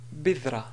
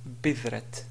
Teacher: si on veut s'arrêter sur la ta, on va dire bidra et non pas bidrat. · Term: ta marbuta